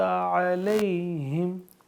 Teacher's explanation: علی کو بھی لمبا نہیں کرنا کیونکہ یہاں پہ یہ یا لین ہو رہا ہے